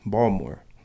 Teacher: The T and the I are removed when a native speaks, as in Baltimore.